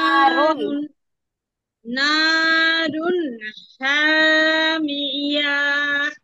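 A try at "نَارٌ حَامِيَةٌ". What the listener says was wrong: এয়া টান নাই আপু। নারুন হামিয়া।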